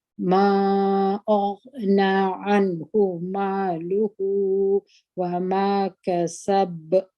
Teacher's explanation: وما كسب ستاسي ورته پامې دلته یو اواز د قلقلې دی کسب ودغته وسطا وایي یعنی میانه قلقله چې نه غټه قلقله ده او نه کوچنۍ قلقله ده